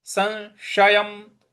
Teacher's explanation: उसके ऊपर अनुस्वार है। उसका उच्चारण न में ले आना है। अस संशयम जो बड़ा वाला श है उसको श बोलेंगे।